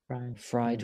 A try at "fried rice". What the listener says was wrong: Fry chứ không phải phai. Fried. Fried. Fried rice.